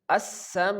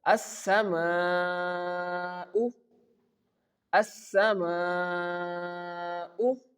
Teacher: we have to stretch that word usually for four to six counts, but whenever the sign is small, we have to stretch that word for four counts and when the sign is big, we have to pronounce that word for six counts. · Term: long mad